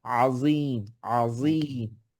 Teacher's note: আইন عظيم আবার আইন, এখানে আজিম না কিন্তু, হামজা দিয়ে যেন আমরা না পড়ি, আযীম, আযীম।